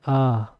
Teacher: हमारी जीभ का पीछे का भाग लग रहा है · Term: पश्च स्वर